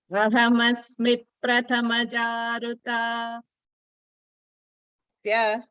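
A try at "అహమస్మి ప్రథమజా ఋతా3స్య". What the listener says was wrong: రుతా అక్కడ నంబర్ 3 చూసారా? 3 మాత్రలు. అది 3 మాత్రలు. మాత్ర ఈజ్ టైం డ్యూరేషన్. ఏ సిలబల్ని ఎంతెంత సేపు చెప్పాలి అని కరెక్ట్గా చెప్పాలి.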